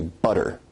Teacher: notice where we write it with two T's in English that your tongue is producing a tap sound there rather than a full stop or plosives sound so in North American English you say butter now as compared